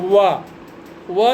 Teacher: तो वा जो है इसका उच्चारण वकारस्य दंतोष्ठम यानी दांत और ओठ दोनों को मिला करके वा का उच्चारण होता है।